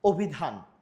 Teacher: তাহলে অ এর উচ্চারণ এখানে অ এর মতো না হয়ে ও এর মতো হচ্ছে। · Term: অ এর সংবৃত উচ্চারণ